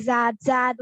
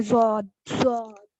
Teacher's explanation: जॉद भी heavy word है, यानी इसको ऐसे नहीं पढ़ेंगे जाद जाद, वो लाइट वर्ड हो जाएगा और रॉन्ग भी हो जाएगा।